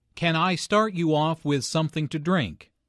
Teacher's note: with something to drink notice how the question starts with can since this is a yes no question the intonation Rises at the end